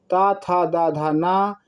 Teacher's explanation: जिनका उच्चारण ऊपर के दोनों दांतों पर जीभ लगाने से होता है वह दंत कहे जाते हैं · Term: दंत ध्वनियाँ